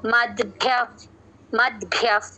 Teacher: ప ముందు విసర్గ కాబట్టి ఎఫ్ సౌండ్ చేస్తున్నాం · కొంచెం ద వినిపించాలి భ వత్తు వినిపించాలి